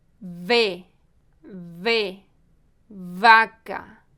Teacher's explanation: Lembre-se, em português, os sons de B e V são bem distintos. O V é pronunciado com vibração, colocando os dentes superiores sobre o lábio inferior.